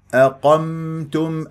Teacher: الهمزه مرققه هذه فممكن انه انا اقول اقمتم وهذا خطا اقمتم الهمزه مرققه لا افخمها لمجاورتها للقاف المفخم